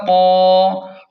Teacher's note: قاف کو کھینچیں اور موٹا پڑھیں